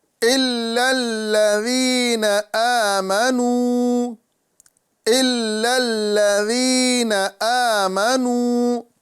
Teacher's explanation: یا مدہ ایک الف کے برابر کھینچ کے پڑھیں گے۔ الف مدہ میں ایک الف کے برابر ہم کھینچ کے پڑھیں گے، پھر واو مدہ کو بھی ایک الف کے برابر کھینچ کے پڑھیں گے۔